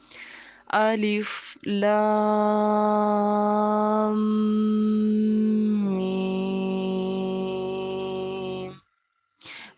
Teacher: तो इस सूरत में अगर किसी हरफ पर मद्दा के साथ तशदीद भी हो और उससे पहले वाले हरफ पर भी मद्दा हो तो लाम की आवाज़ को 5 अलिफ की मिक़दार में खींचेंगे और खींचते हुए मीम की आवाज़ में मुद्गम करेंगे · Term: इदगाम